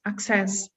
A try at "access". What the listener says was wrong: So the stress syllable in access is the first one. So not access, like success is the second, but access is the first.